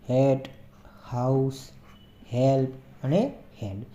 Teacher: તો આ જે શબ્દો આપણે એનું પ્રોનાઉન્સિએશન કરશું તો એ જે વ્યંજન છે એ ગળામાંથી ઉત્પન્ન થશે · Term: ગ્લોટલ કોન્સોનન્ટ્સ